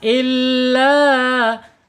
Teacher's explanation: prosesnya dari tenggorokan bablas sampai ke mulut enggak boleh mampir-mampir ke lubang hidung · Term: mad thobi'i